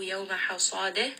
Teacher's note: Sad here is going to be heavy.